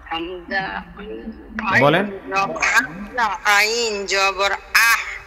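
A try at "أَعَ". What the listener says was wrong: না ছেড়ে দিবেন না লাস্টে ছেড়ে দিবেন না বাতাস বের করবেন না চাপ ধবেন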